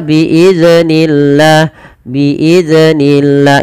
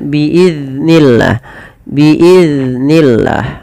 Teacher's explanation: Jangan dibaca dengan memantulkan huruf dal. · Pada lafal biiznillah jangan dibaca dengan memantulkan huruf zal. Kesalahan yang sering terjadi di dalam membaca huruf zal adalah memantulkan huruf zal tersebut.